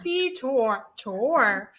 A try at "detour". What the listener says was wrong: Tour. No, you. Get rid of that you. I know, but that's not how I would pronounce it. Detour.